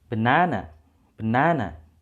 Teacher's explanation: Kita tekannya di suku kata kedua.